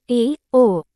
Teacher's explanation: मुख संवृत स्वर से थोड़ा अधिक खुलता है। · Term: अर्ध संवृत स्वर